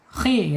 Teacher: Ngorok sedikit suaranya kayak orang tidur ya. Bil khi walaupun dia kasroh harus dibaca tebal, tafkhim ya. khi gitu, nggak boleh akhi, tapi akhi ya.